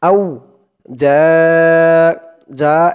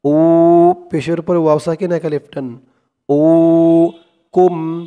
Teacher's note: যা এখানে 4 আলিফ টান, মধ্যে মুত্তাসিল। আউ যা উকুম, উ পেশের উপরে ওয়াও সাকিন এক আলিফ টান, উ কুম।